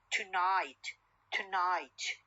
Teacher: O sound or schwa sound is deleted and the N becomes syllabic N.